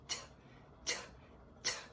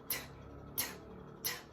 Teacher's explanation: O som que ela faz em inglês é T, T, T. É soprando com a língua no céu da boca.